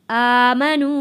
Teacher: یہ کھڑی زبر بھی کھینچ کر ہم نے پڑھنا ہے، اور یہ آگے نون واو پیش نو کو بھی کھینچ کر پڑھنا ہے۔